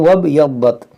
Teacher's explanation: اس الف کو نہیں پڑھیں گے، یہ حمزہ وصلی ہے